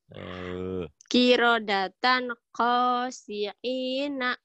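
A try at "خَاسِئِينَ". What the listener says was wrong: Bukan ain ya, khosiina. I alif hamzah. Khosiina. Ini mirip ain. Orang Jawa ya khosiin khosiin. Kho.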